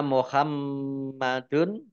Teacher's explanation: mim tasdid dibaca ghunah atau mendengung ditahan dua harakat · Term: gunnah